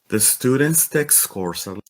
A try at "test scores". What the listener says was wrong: I feel like I'm hearing like text text like a text like a text message or something.